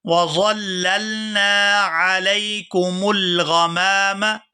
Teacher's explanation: یہاں نون کو الف مدہ کی وجہ سے کھینچ کر ادا کیا جائے گا۔